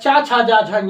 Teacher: इन सब का उच्चारण स्थान क्या है, तालु है।